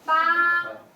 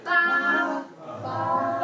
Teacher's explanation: Yeah, that's the first tone. Flat and high.